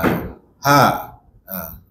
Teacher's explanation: Cuma ha ni dia atas sikit pada Hamzah. Hamzah bawah sikit. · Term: makhraj ha